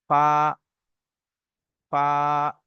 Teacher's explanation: নিচের ঠোঁটের ভিজে অংশ এবং সামনে উপরের দাঁতের আগার সঙ্গে লাগিয়ে উচ্চারিত হয় ফা।